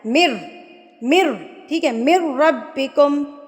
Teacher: مدغم ہو جاتا ہے تو ملانے کو ادغام کہتے ہیں، تو جب آپ نے را سے ملانا ہے نا تو بغیر غنہ کے ملانا ہے